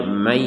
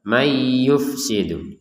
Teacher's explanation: Itu namanya idgham bigunah. Dimasukkan nun kepada ya disertai dengung dengungan. Kalau masuk tanpa dengung nanti akan terdengar may yufsidu. · dimasukkan nun kepada ya disertai dengungan. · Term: idgham bi gunnah